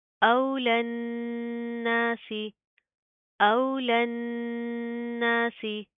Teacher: نون کے اوپر شد آ رہی ہے، گنا کریں گے، ناک کے اندر ساؤنڈ پیدا کریں گے، ٹھیک ہے؟ پہلے گنا کریں گے اور پھر ساتھ کا الف پڑھا جائے گا اور پھر سین کی ادائیگی ہوگی.